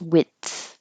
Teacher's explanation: I'm just stopping the airflow width and then relaxing my tongue so air can go over it and let the air flow for the TH.